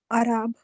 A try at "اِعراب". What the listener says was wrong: اعراب نہیں ہوتا، یہ اعراب زیر کے ساتھ ہے.